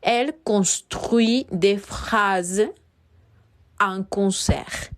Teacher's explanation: Sin embargo, al final les pongo un sustantivo, que es un concert. Aquí sonará la R, pero no la T.